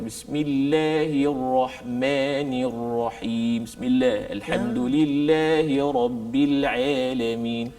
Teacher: dia baca dengan condong. Semua sebutan ada condong. Macam imalah. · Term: ta'wijil fak